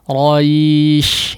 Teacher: perhatikan hembusan huruf shin ya. Secara khusus tafasyinya ya. Tafasyinya diperhatikan.